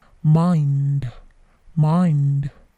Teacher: Bunyi d-nya atau bunyi akhiran d-nya itu memantul sedikit